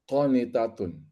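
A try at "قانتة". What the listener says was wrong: Ya, qonitatun.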